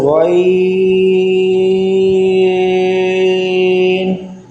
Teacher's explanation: اس سے آگے آ گیا غین، حروف مستعلیہ میں سے بھی ہے، اس کو پر بھی پڑھنا ہے اور مخرج سے ادا کرنا ہے۔ اس کا مخرج ہے حلق کے اوپر والے حصے سے یہ ادا ہوتا ہے